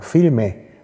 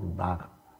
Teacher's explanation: Und oder Barre statt Bar, Bar und Barre. Da wird noch so ein E dran gehängt, nicht geschrieben, aber zumindest gesprochen, weil man keinen Konsonant im Auslaut haben will.